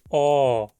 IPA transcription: ɔː